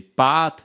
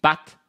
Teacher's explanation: Si vous écoutez bien, des pâtes, la voyelle est plus longue, et pâte, la voyelle est courte. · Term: voyelle longue